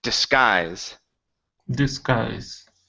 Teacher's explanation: So put the stress on the end of the word.